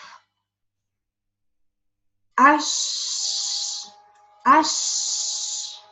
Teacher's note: Letter Shin, the middle of the tongue, touches the roof.